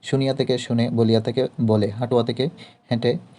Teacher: অভিশ্রুতি হচ্ছে সাধু থেকে চলিত হয়ে যায়, ইয়া ও ওয়া লোপ পেয়ে যায়। বাক্যের শব্দের মধ্যে ইয়া এবং ওয়া শব্দ দুটি লোপ পেয়ে যায়। বিপর্যস্ত স্বরধ্বনি পূর্ববর্তী স্বরধ্বনির সঙ্গে মিলে গেলে এবং তদনুসারে পরবর্তী স্বরধ্বনির পরিবর্তন ঘটলে তাই মূলত অভিশ্রুতি।